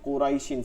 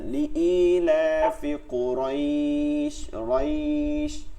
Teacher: যখন আপনি থামবেন, মানে আয়াতের শেষে থাকে, তখন আপনাকে এটাকে একালিফ টান দিতে হয়। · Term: মাদ্দি লিন